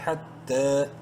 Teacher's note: ایک الف برابر لمبا کریں گے، تا کو کھڑی زبر کی وجہ سے. یا سائلنٹ ہے.